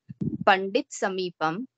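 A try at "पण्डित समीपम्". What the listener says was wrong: I just want to correct your diction. So automatic halant she is doing. Every Pratipadika, there is a tendency, for example, Hindi, to do Pandit Samipam.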